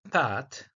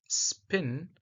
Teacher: the p is aspirated which means it is pronounced with a burst of air or with an additional puff of the air